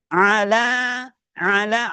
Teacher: ain ditekan wasatul hal pertengahan tenggorokan